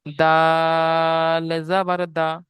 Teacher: জি, আর দালটা দেখেন, দালটা আপনারা দেখেছিলেন তিন আলিফ টান ছিল। তো দালটা বলার সময়ও তিন আলিফ টান দিতে হবে এবং হারাকাত লাগিয়ে জলদি পড়তে হবে।